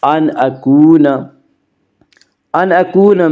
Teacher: باللہ ان اکون، ان اکون میں اظہار حلقی ہوگا، اس کا قاعدہ یہ ہے کہ نون ساکن یا تنوین کے بعد اگر حروف حلقی میں سے کوئی حرف آئے تو وہاں پہ اظہار حلقی ہوگا، یعنی نون ساکن اور تنوین کو بغیر غنہ کے پڑھیں گے